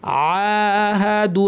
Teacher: আওয়া কুল্লামা, মাতে এখানে টান আছে, এর আগে কিন্তু কোনো টান নাই, তাহলে আমাদেরকে বলতে হবে আওয়া কুল্লামা মা। আহাদু, আইনের উপর খাড়া জবর যেটাকে আপনারা বলেন, অথবা ছোট আলিফ, এটাকে টানতে হবে।